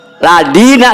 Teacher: Jadi keluar daripada ujung lidah dan gigi sebelah atas menghadap kepada langit-langit, itu dal.